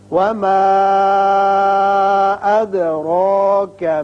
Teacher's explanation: مد منفصل ہے 3 الف کے برابر طویل کریں